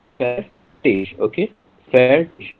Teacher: IG you have to pronounce as ish sound. IG. 97% cases, or you can say 97%, IG as pronounced as ish sound.